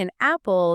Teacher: the N acts like a bridge. An apple just slides right across. >> N is a lubricant.